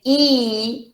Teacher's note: if i say e the lips are spread